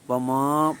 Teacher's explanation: وما ناک کے بانسے میں آواز ہرگز نہیں جائے گی